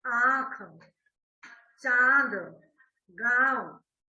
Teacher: इसके उच्चारण में नाक और मुंह दोनों से हवा निकलती है। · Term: अनुनासिक